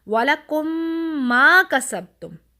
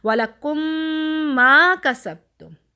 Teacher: ہم غنہ کے ساتھ ان کو مرج بھی کر رہے ہیں, ایک میم کو دوسری میم میں داخل بھی کر رہے ہیں, اور ساتھ ہم غنہ بھی کر رہے ہیں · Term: ادغام